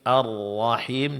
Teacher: Arrahim di sini ro ditebalkan dan tasdid dijelaskan. Makhraj huruf ha dijelaskan.